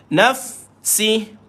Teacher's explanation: Fa ada hams pada dia bunyi angin keluar